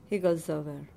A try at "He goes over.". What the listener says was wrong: And again, you're putting too much stress on the second syllable.